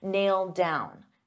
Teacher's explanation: So because I have a D sound on down and these two go together, I'll pronounce it as one and you'll only hear one D sound